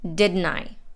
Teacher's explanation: in the word didn't the t is dropped and n links right into the i and it sounds like didn't i is one word didn't i then we have tell you u is pronounced fast